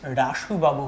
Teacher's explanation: শব্দের শুরুতে যদি অ থাকে সেইখানে অতিরিক্ত একটা রয়ের উচ্চারণ করে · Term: আদি ব্যঞ্জনাগম